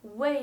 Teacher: when it means for or for the purpose of it's pronounced the fourth tone